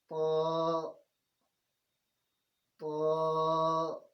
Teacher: تو 2 حرفی ہے، اور تا اور تو میں فرق یہ ہے کہ تا باریک ہے اور تو موٹا ہے